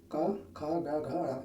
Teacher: कंठ, कंठ ध्वनि, उनके उच्चारण में हमारे कंठ से आवाज निकलती है